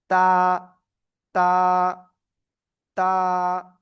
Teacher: জিব্বার আগা উপরের দুই দাঁতের গোড়ায় লাগান, গোড়ায় গোড়ায় লাগিয়ে সিম্পল উচ্চারণ করতে হবে এক আলিফটা নিয়ে